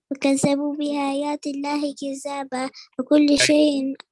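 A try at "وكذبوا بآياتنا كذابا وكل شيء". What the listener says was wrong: بآياتنا تعالى بآياتنا. You said بآيات الله.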